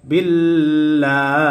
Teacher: আর আল্লাহ শব্দের লামকে বারিক করে পড়েছি, অর্থাৎ পাতলা করে পড়েছি